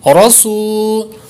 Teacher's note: سو کو لمبا کریں گے، واو مدہ ہے اور سین پر سیٹی بھی ماریں گے کیونکہ یہ حروف صفیریہ میں سے ہے